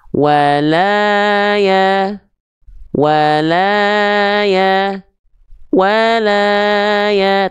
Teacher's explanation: Saya akan melafalkan dengan flat nih nadanya datar nih. Tapi tetap kadarnya 2 kali ayun.